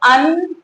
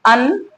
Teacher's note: इसे अन उच्चारित करेंगे। नासिका से ही हवा निकलती है। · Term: अनुस्वार